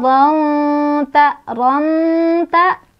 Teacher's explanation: tanwinnya dibaca samar-samar sambil berdengung, di mana kadar samarnya lebih besar dibandingkan dengan dengungannya. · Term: ikhfa akrab